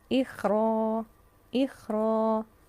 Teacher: چونکہ یہاں را پر ہے اس لیے الف بھی پر ہو جائے گا